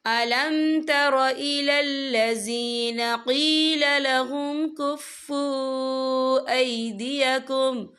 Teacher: واو ساکن ہے، واو ساکن سے پہلے پیش ہے اور اس پر چھوٹی سی مد بھی ہے، تو ہم اسے 3 یا 4 عدد کے برابر کھینچ کے پڑھیں گے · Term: واو مدہ